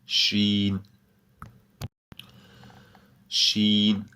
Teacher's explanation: The sound of the letter Sheen comes when the center of the tongue touches the palate